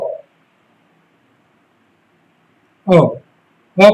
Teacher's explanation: और एक शब्द है हमारा अंग्रेजी का आगत स्वर ओ। ओ, ओ का उच्चारण होता है कंठ ओष्ठ द्वारा